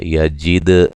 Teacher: دال پہ قلقلہ کریں گے